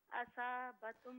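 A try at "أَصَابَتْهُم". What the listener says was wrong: स्वाद को पुर पढ़े। असाबतहुम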